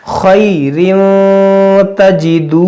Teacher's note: देखिए, तनवीन के बाद ' ता' है, जो इख़्फ़ा के अक्षरों में से एक है , इसलिए हम इख़्फ़ा नियम लागू करेंगे और गुन्नाह करेंगे